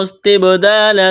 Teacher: تا کو با کے ساتھ ملانا ہے، با پر قلقلہ کریں گے، الف مدہ ہے، ایک الف کے برابر کھینچنا ہے۔